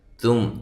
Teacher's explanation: کنتم، یہ بھی اسی طرح باریک اخفا ہے، کاف کو باریک. تم، تا کو باریک میم ساکن کا اظہار